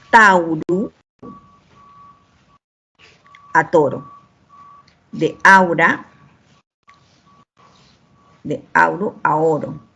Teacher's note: Tenemos que el diptongo AU cambió a O.